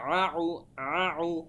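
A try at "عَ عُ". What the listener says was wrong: আরো গলার ভেতর থেকে বলতে হবে আর কি ভাইজান।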